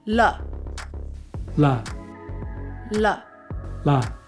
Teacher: Not strong on the la, not la. It's very light.